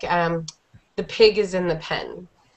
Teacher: the G actually comes out sounding like a G instead of sounding like a K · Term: g sound